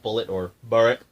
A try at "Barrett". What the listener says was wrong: Barrett. You can't pronounce the L's. I'm sorry.